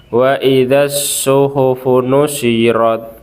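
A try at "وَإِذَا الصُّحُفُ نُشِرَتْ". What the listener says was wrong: Funushinya dijelaskan. Wa idzas suhufu nusyirat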